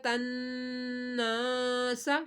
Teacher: نون کے اوپر تشدید ہے، نون میں شدت پر ہر حالت میں غنہ کیا جاتا ہے